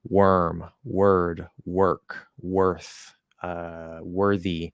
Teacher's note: even though it's stressed and spelled or it's just pronounced ER